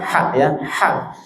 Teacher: Haknya tenggorokan tengah cenderung ke atas